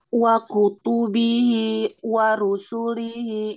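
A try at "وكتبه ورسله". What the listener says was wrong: Nah, jangan di jeda ya, jangan di jeda. Jangan wa kutubihi wa rusulihi, jangan nyambung. Wa kutubihi wa rusulihi. Nah, jadi jeda di dalam baca Quran, jeda sedih sebentar tanpa mengambil nafas, itu perlu contoh dari Nabi. Jadi seperti itu dalam baca Al-Quran. Kalau di kita saktah namanya itu ya.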